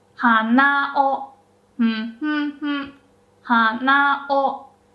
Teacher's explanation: the particle after heibangata is also pronounced with a high pitch.